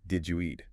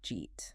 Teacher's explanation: did you eat? Which often becomes just, jeet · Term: connected speech